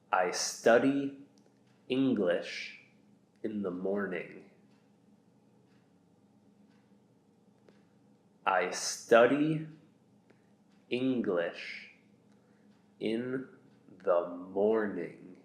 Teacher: You'll notice that the ng sound is the same, whether it's in the middle or end of a word. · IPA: /ŋ/